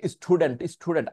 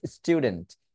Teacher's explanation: specially S এর পর যদি কখনো টি থাকে সেটাকে ঠাক করে ঠ এর মত উচ্চারণ করার চেষ্টা করা দরকার নেই সেটাকে নরমাল ট উচ্চারণ করলেই আপনার হয়ে যাবে